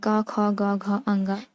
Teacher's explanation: क वर्ग में आ जाते हैं क, ख, ग, घ, अंग, ये कंठ से उत्पन्न होने वाली ध्वनियां हैं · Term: कंठ ध्वनियां